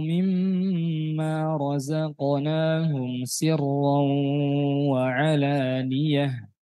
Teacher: Ra yang berharokat fathah sebelumnya kasrah. Ya. Tidak dibaca tipis, tetap dibaca tebal. Mengapa? Karena ra-nya dalam keadaan asli, berharokat asli.